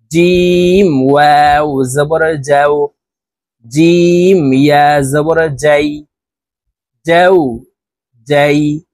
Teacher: জিম হরফ জিহ্বার মধ্যখান থেকে উচ্চারণ করতে হবে কারণ জিমের মাখরাজ জিহ্বার মধ্যখান থেকে হবে জিম ওয়াও জবর যাও